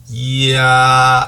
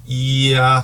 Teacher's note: 발음 처음 시작할 때 살짝 느껴지는 이모음의 기운이 있어요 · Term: 반모음